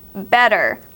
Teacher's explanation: the Double T sometimes can sound like a d based on your English but some people do pronounce the Double T with a t